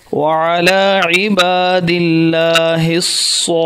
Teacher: صاد ہے تو وہ موٹا اور سیٹی کے ساتھ